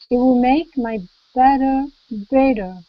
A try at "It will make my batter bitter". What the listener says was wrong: Now it's important that it's bitter, not better, because bitter is bad, but better is good. So bitter and better. remember with the I, it's bitter, and that's a flavor, bitter. It's a bad flavor.